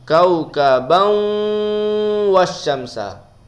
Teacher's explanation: Terus masuk kepada waw bersama dengan dengung. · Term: idgham ma'al gunnah